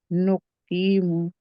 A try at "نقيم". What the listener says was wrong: نقیم قا موٹا پڑے نقیم